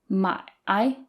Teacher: is third tone so there's a dip in the middle